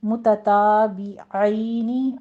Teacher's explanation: عین کو وسط حلق سے ادا کیجیے اور آگے یالین ادا کرنا ہے